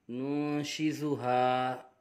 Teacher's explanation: نون نون پیش نون، شین زیر شی، نون شی، زا پیش زو، نون شی زو، ہا الف زبر ہا، نون شی زو ہا نون ساکن کے بعد حرف اخفا میں سے شین آ رہا ہے، اخفا ہوگا، غنہ کر کے پڑھیں گے۔